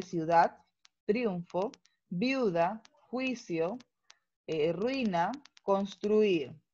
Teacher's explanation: existen dos vocales cerradas en una sola sílaba. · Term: diptongo